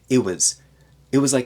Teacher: at the beginning of a sentence we can take out that t and not even have a glottal stop